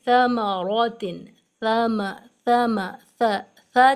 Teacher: جب ہم پڑھ رہے ہیں تو زبان کے ٹپ کو باہر ادا کر کے پڑھ رہے ہیں